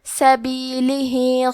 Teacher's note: یقاتلون، کلمت سبیلہ میں آخری میں ہا کے نیچے کھڑی زیر ہے، یہاں حکم ہے مد صلہ صغرا، تو ہم اپنی آواز 2 مد کے برابر لمبی کریں گے